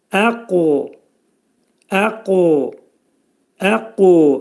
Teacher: Qaf hərfi qalın hərflər qrupuna aiddir və bir qədər Azərbaycan dilindəki hərfdən q hərfindən tamamilə fərqlidir. Qaf hərfinin məxrəci dilin sonu və dilçəyin əvvəlindədir və qaf hərfi sükunla oxunduqda, çünki bu qutbicət, qaf hərfi qutbicət hərflər qrupuna aid olduğuna görə bir qədər vurğulu şəkildə oxunacaq və az-acıq uya meyilli şəkildə olacaq.